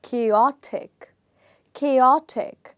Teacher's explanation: you will say this as chaotic chaotic so what's happening is the stress in the word is changing from the first syllable to the second syllable